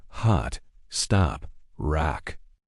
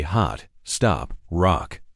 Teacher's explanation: in British English, we make a much shorter, more rounded sound with our lips. It's an O sound. · Another vowel that changes quite a bit is the o sound in words like hot, stop, and rock. In American English, this is typically a very open a sound